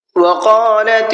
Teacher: قاف کو پر کر کے پڑھنا ہے